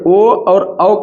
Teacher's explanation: ओ और औ का उच्चारण स्थान क्या है कंठ है